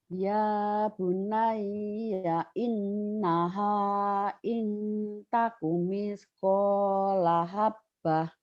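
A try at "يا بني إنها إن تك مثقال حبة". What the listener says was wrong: Iya, bagus.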